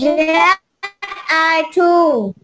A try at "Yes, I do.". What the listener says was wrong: Do, yes, I do. Do, the, do, chứ không phải là chu nhé con nhé. Do.